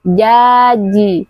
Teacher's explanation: huruf jim adalah huruf yang memiliki makhraj tengah lidah bertemu dengan langit-langit atas. Jaji. Tidak boleh dibaca terlalu terlalu becek.